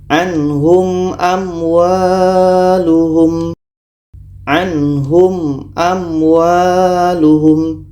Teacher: Maka ini izhar syafawi, dibaca jelas. Mim jelas, a jelas. Mim jelas, waw jelas, dan tidak boleh didengungkan.